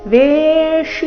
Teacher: ವೇ ದೀರ್ಘ ಬಂದು ಸೌಮ್ಯ ಆಘಾತ ವೇಷ ಬಂಧುಷು ಬಂಧುಷು ಬ ಮೇಲೆ ಆಘಾತ ಕೊನೆಗೆ ಮೂರ್ಧನ್ಯ ಷಟ್ಕೋ ಷ ಉಕಾರದೊಂದಿಗೆ